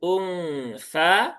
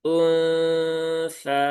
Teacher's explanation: ketika mendengungkan nun ya dan menyamarkannya itu posisi lidah sudah mendekati ke makhrajnya huruf tsa ya